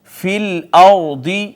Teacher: را ساکن ہے، اس کو موٹا کر کے پڑھیں گے اس وجہ سے کہ ما قبل اس کا مفتوح ہے۔